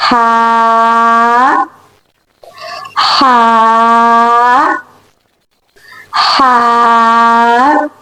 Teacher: You have to say it with the middle part of throat having a very soft and light sound.